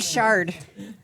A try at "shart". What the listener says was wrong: Shart. no D at the end.